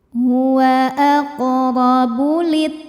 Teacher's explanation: huruf ro dibunyikan secara tafkhim sebab ro berbaris di atas yaitu baris fathah maka cara bacanya ditebalkan